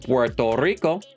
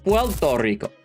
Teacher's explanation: One's called lambdaism, which is when the R sound at the end of a syllable becomes an L sound. So instead of Puerto Rico, they'll say wellto Rico. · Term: lambdacism